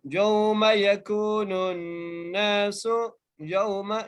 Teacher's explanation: یا کو واو سے ملا رہے ہیں اور یہاں پر لین کا قاعدہ لگ رہا ہے